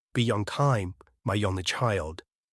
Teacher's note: add a weaker ya between the 2 vowels. For example, be on time, my only child.